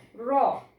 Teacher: কম্পন ধ্বনি, যে ধ্বনি উচ্চারণের সময় মুখের অগ্রভাগের জিহ্বা একটু কম্পিত হয় এবং মুখের উপরের তালুতে দন্ত মূলে স্পর্শ করে